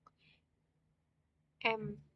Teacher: Setelah itu udara dibentuk oleh alat ucap di rongga mulut atau hidung sehingga menghasilkan bunyi-bunyi tertentu. Seperti bunyi M yang keluar melalui hidung